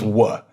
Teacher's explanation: It was a labial-velar approximant.